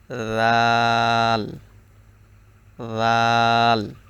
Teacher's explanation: দাল উচ্চারণের সময় জিহ্বার আগা তার বরাবর উপরে তালুর সঙ্গে লাগতেছে